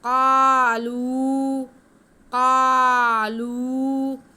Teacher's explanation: قاف حروف مستعلیہ موٹا کر کے پڑھیں گے، ساتھ میں الف ہے اور کاف پہ زبر ہے، الف مدہ ہو گیا، قاف کی آواز کو ہم کھینچ کے پڑھیں گے۔ · الف مدہ ہو گیا، قاف کی آواز کو ہم کھینچ کے پڑھیں گے۔ اس کے بعد لام پہ پیش ہے، واو ساکن ہے تو یہ بھی واو مدہ ہے، اس کو بھی ہم کھینچ کے پڑھیں گے۔